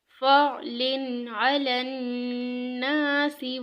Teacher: تنوین کے بعد حروف ہلکی میں سے ہمارے پاس عین آیا ہے، اس لیے اس پہ اظہار کریں گے